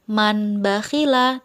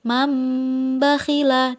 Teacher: tauna disini terdapat nun mati bertemu dengan huruf ba memberilah maka nun mati tersebut digantikan dengan huruf mim